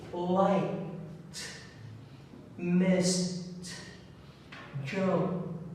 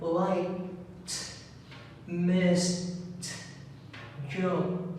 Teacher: we have the unvoiced sound of the ed. It's pronounced as t.